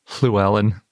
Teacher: It's called a lateral fricative. The lateral part means the air goes around the sides of your tongue. And fricative means that the sound comes from friction.